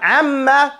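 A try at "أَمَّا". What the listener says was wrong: The meme is the type of sound that you cannot pronounce it clearly without pressing your lips together. Amma. Now, don't do it so hard, because if you do it too hard, you won't get a sound. But it has to be pressed. Mutawassitan. Amma. So that it can vibrate. The sound is vibrating on that.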